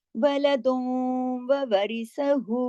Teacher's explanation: लहू वलदुन, अब वलदुन दाल दो पेश दुन की तनवीन आ गई और उसके बाद वाव आ गया, यहाँ इदगाम हो रहा है, नाकिस इदगाम हो रहा है, वलदुन ववरिसहू, ठीक है, वलदुन वाव के साथ इदगाम हो गया और नाकिस गुन्ना